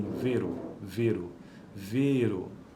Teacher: E fechado e longo como em vero